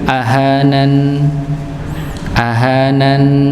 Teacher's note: Nun dia punya sifat dengung.